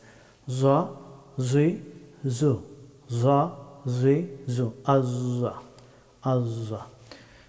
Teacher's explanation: জ হরফটি মুখ ভর্তি করে উচ্চারণ করতে হয়।